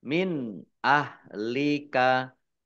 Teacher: Nun sukun bertemu dengan huruf alif, bacaan idhar, dibaca jelas.